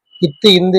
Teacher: மேல்வாய் பல்லின் அடியை நாக்கின் நுனி பொருந்துவதால் பிறக்குறதுதான் இத்து